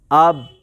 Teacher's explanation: میں نے اگر صرف اتنا ہی پڑھا اب تو دونوں ہونٹ آپس میں ٹکر کھا گئے، لیکن پھر الگ نہیں کیے